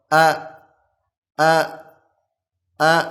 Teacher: Huruf hamzah ini makhrajnya, tempat keluarnya itu adalah tenggorokan bawah. Ya, tenggorokan bawah.